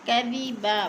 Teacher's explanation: کے اوپر زبر ہے تو اللہ پر پڑھا جائے گا۔ کذبا، وقف کی صورت میں 2 زبر تنوین کو 1 زبر میں بدل کر پڑھیں گے